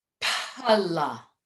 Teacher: So pa, as in pala, that would be an Aghosha sound.